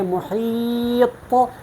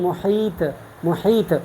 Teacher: طا میں جو ہے صفت استعلاء اور اطباق ہے اور جہر ہے، جبکہ تا میں جو ہے صفت استفال اور انفتاح ہے اور حمز ہے۔